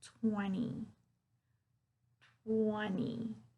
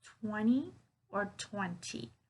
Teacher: the tip of my tongue is touching the back part of my teeth when i say but the shape of my mouth my lips